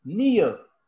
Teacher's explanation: र sound जो है वो ट्रिम हो जाती है। कोई भी ट्रिमिंग ऑफ द साउंड, वो वाला जो प्रोसेस है, दैट इज कॉल्ड इलिजन।